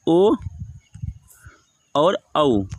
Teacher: उदौतो कंठ ओष्ठम बोल डालता है कि ओ और औ का उच्चारण स्थान कंठ और ओष्ठ हो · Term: कंठोष्ठम